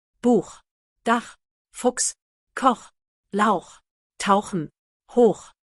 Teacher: Pronounced from the back of the throat, similar to the Scottish loch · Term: guttural chi sound